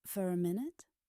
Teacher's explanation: when the next word begins with a vowel sound, for connects smoothly.